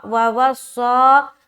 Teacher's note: صاد جو ہے وہ حروف مستعلیہ میں سے ایک ہے اور اس کے اندر سیٹی کی صفت بھی پائی جاتی ہے